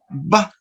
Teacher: What is the characteristic of the consonant ba? That this consonant is bilabial, no? Bilabial, stop, voiced.